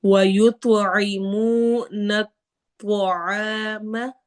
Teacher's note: وا یتوعی، عین حروف حلقی میں سے ہے، منہ واو مدہ کرنا ہے، نون کو آگے توا سے ملانا ہے، توا کو ہیوی پڑھنا ہے